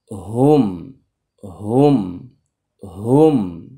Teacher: মিমের গুন্না হচ্ছে মুখ বন্ধ · হা এর মাখরাজ হচ্ছে হলকের শুরু থেকে হামজা হা এ একেবারে হলকের নিচের দিক থেকে শুরু হবে